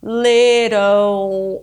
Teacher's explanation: the back of your tongue that creates the dark L little that's the dark L which is very similar to the W sound but it's different